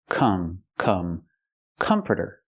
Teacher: It's not comforter. It's not the ah sound like hot and stop. It's the sound like cup and up. Closed and relaxed.